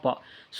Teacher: பா என்னும் எழுத்து இதழ்கள் ஒட்டுவதால் பிறக்கிறது